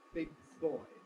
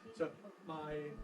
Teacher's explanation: you hear the G release big no you don't Big Boy before I can release the G my lips have come together for the B big boy so my the back of my tongue makes contact